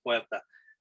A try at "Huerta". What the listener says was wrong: So in Spanish, like the H is silent, so it's more like Huerta.